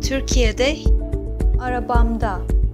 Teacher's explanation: the vowel has changed and harmonizes with the previous vowels in the main word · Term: Vowel harmonization